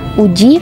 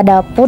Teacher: fonem u dengan alofon terbagi dua yakni u Tengah atas bundar belakang dengan u Tengah bawah bundar belakang